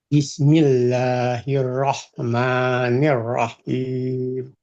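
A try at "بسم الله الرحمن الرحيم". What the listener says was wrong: Good. Good.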